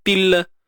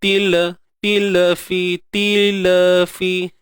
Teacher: Kemudian ta pada bawah ti. Matikan lam, til. Dan lam jaga sifat dia, jangan bagi tertahan.